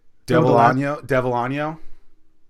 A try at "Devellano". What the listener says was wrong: See, okay, so this is what's funny is it's Italian, not Spanish. But L's are not right. Because it's not a Y sound, it's an L sound. Devellano.